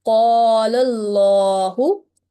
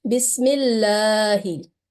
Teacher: the word Allah will be pronounced in thick and heavy sound. So here, how we will read this example, Qala Allahu in a thick and broad sound. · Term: thick sound